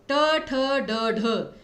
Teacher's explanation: अब आप सभी जानते हैं कि श, जो ये श है, इसका उच्चारण स्थान तो तालु होता है, लेकिन जो श षटकोण है उसका उच्चारण स्थान होता है मूर्धा, जिसमें आपकी जीभ जो है वो मुड़ जाती है। उसी प्रकार ट वर्ग, ट, ठ, ड, ढ, सभी का उच्चारण स्थान मूर्धा होता है